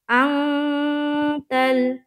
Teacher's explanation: نون ساکین اور اس کے بعد تا ہے، یہاں پر اخفا کا قاعدہ ہوگا، ناک میں اپنی آواز کو تھوڑی دیر چھپانا ہے